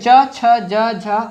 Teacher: च वर्ग, यानी पूरे च छ ज झ और अंग, ये कहाँ से निकलेंगे हमारे, कहाँ से निकलेंगे, ये निकलेंगे तालु से। तालु मतलब ये यहां से निकलेंगे।